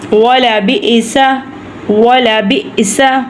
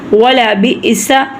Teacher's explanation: ہم نے جھٹکا حمزہ کی وجہ سے لگایا کیونکہ حمزہ کے اوپر ساکن ہے. جہاں پہ یہ آ جائے وہاں پہ رک کے جھٹکا لگا کر ہم اسے ادا کریں گے.